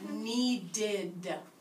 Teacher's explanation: We hear an id at the end of that sound, or at the end of that word.